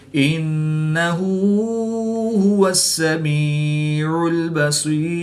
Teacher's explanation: سین کو باریک اور صاد کو پر یعنی موٹا پڑھیں گے